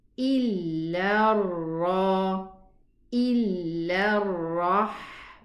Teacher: Here we have a shadda ra, be careful, illa ra, and it's elevated.